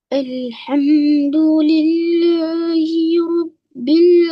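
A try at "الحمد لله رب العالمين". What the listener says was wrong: Okey, bagus. Very good.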